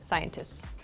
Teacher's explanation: scientists is very difficult to say in Rapid speech so we make it like a long s sound